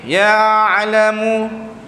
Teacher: jadi cara huruf ain yang mati kita lebihkan, tarikkan sedikit, lebihkan sedikit sampai ke dia punya makhraj dia itu.